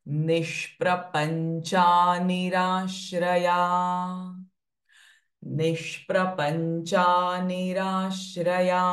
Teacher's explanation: So it is the sh sound getting connected with the pr sound.